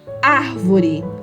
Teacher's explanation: a sílaba tônica é a antepenúltima sílaba